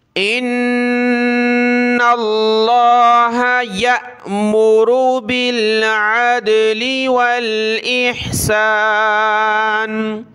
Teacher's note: حمزہ کو نون کے ساتھ، نون کو لفظ اللہ کے ساتھ ملایا، نون پر غنہ کیا